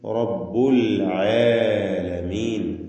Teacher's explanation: റാഇനും തഫ്ഖീം കൊടുക്കുക, പൂർണ്ണമായ തഫ്ഖീം.